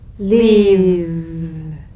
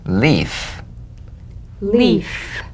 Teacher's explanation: if you don't have enough vibration in your V's they'll end up sounding like the F because they're exactly the same one has vocal cord vibration the · one has vocal cord vibration the other is unvoiced